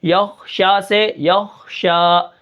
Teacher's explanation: ٹھیک ہے، یا اور خا کو آپس میں ملا کے پڑھیں گے. شین کے اوپر کھڑا زبر ہے تو اس کو ہم ایک الف کے برابر کھینچ کر پڑھیں گے